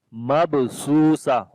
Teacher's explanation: On the ba we make qalqala, which is the weak qalqala. Su we long due to waw madda.